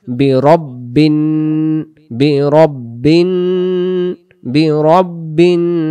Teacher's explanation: এই যে এখানে বিন ধরে রাখতেছি, এটাকে গুন্না বলে, নুনের উপর তাসদিদ থাকলে গুন্না করে পড়তে হয়, বিরাব্বিন এভাবে ধরে রাখবেন।